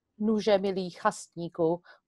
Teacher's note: The only thing which might be a bit complicated for the English speaker is a palatalized ni in chasníku